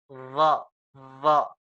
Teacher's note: Vo mengeluarkan nafas, mengeluarkan angin. Anginnya keluar lewat sela-sela gigi dan sela-sela lidah antara lidah dan gigi yang terbuka.